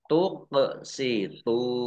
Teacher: Qaf sukun, bacaan qalqalah, dibaca memantul.